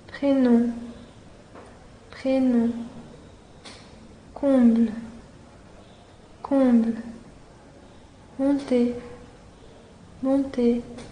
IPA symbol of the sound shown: ɔ̃